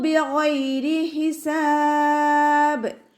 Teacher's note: ഗൈനിൻ്റെ sound അദ്നൽ ഹൽക്കിൽ നിന്നാണ് പുറപ്പെടുന്നത്. നമ്മുടെ തൊണ്ടയുടെ ആദ്യ ഭാഗത്തു നിന്ന് സൗണ്ടിന് ഐനിൻ്റെ സൗണ്ടായി പോവാതെ നോക്കട്ടെ.